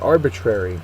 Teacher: first syllable is accented